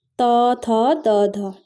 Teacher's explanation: दंत्य हैं यानी कि दांतों से स्पर्श होकर जो जीवा से जो वर्ण निकलते हैं